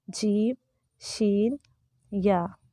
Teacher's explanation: آپ کو محسوس بھی ہوگا کہ آپ کی زبان کا درمیان جو ہے وہ تالو کے درمیان کی طرف اٹھ رہا ہے اور ٹکرا رہا ہے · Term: حروف شجریہ